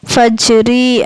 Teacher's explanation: அந்த ஜீமை வந்து அசைச்சு ஓதணும் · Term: கல்கலா